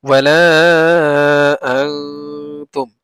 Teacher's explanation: ওয়াও জবর ওয়া, লাম আলিফ জবর লা, ওয়ালা, হামজা নুন জবর আন, ওয়ালা আং, তামিম পেশ তুম, ওয়ালা আং তুম। আং কেন গুণনা করছি? কারণ নুন সাকিনের পরে তা আসছে, ইখফা।